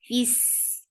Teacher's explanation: Fis, give e sound for kasra and then attach with sin. Fis, and sin will get rakhawa. It is light and it has safir. And safir means give us whistle sound in it.